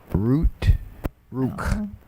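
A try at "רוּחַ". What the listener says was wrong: No, that's a furtive patak. ruach.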